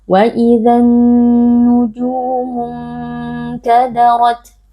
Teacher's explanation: Ikhfa hakiki karena ada nun sukun yang bertemu dengan huruf kaf. Cara membacanya adalah dengan kita samarkan dengungnya.